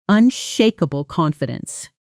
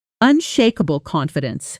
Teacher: The final L sound of unshakable, almost touching the C of confidence without a hard break. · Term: connected speech